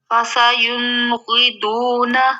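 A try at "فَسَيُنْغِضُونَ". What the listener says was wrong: نہیں نون پہ اخفا نہیں کرنا، ہم نے اظہار کرنا ہے نا، غین ہے آگے حروف حلقی میں سے، فاسا یون غی دون،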